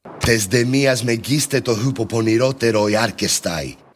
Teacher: There's no aspiration audible at all, so that's a problem.